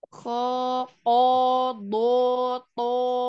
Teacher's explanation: ketika dia huruf-huruf tebal kayak kho, itu kalau fathah dia berkonsonan O. Kho, ko, do, to.